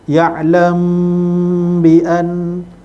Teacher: Yang ni tutup mulut, ya'lam bi an. Okey, tutup mulut selama dua harakat lebih kurang, kemudian baru sebut huruf ba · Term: ikfa syafawi